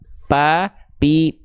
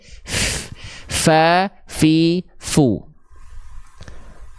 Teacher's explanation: bibir atas bibir bawah jadinya huruf P dia pa pi pu dia tidak akan mengalirkan nafas dia tidak akan mengeluarkan atau menghembuskan angin